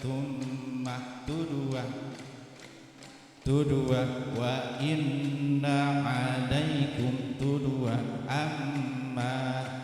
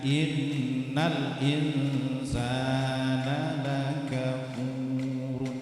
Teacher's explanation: ketika ada mim dan nun yang ditasydid, maka ditahan 2 ketukan, namanya gunnah.